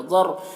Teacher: ضاد کو پر پڑھیں گے, حروف مستعلیہ میں سے ہے